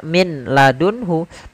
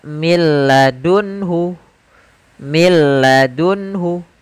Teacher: madunhu tidak dibaca Min ladunhu tapi langsung ke huruf lam karena nunnya dianggap tidak ada dan diidgamkan ke huruf lam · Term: idgham